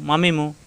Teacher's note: মিম দুই ঠোট থেকে উচ্চারণ মিলানো ঠোট ছেড়ে দিয়ে আবার মিলালে হয়ে যায় মিম